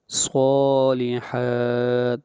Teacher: صاد کو لمبا کریں گے ایک الف کے برابر اور حا کو بھی لمبا کریں گے ایک الف کے برابر